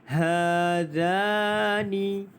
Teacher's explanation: Za ini juga dibaca dengan panjangnya 2 harakat kerana mad asli huruf alif.